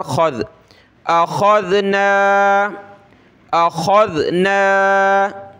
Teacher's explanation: کھا جو ہے کھے یا کھا یا عربی میں نہیں ہوتا, خا ہوتا ہے موٹا کر کے, خا ذال زبر خذ, اخذنا اخذنا.